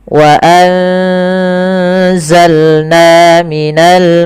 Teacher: Suara nunnya disamarkan ke zai. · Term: ikhfa